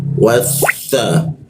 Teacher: bertemu sa itu ujung lidah digigit ya